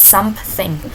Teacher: in word something we added the P sound in between. For example, in word something we say it not like something but we say it something.